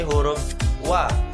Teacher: Selanjutnya, antara dua perut bibir. Sifatnya nafas ditahan, jahar, lunak, dan suara tidak tertahan.